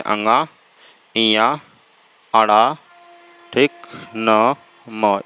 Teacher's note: अनुनासिक वर्ण होते हैं, नाक और मुंह दोनों के सहारे बोले जाते हैं